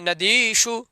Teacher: नदीषु में मूर्धन्य शकार होगा, क्योंकि सूत्र है आदेश प्रत्ययो हो।